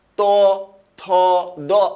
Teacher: ত বলার সময় আপনার জিহ্বার আগাটা দাঁতে লাগবে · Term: দন্ত ধ্বনি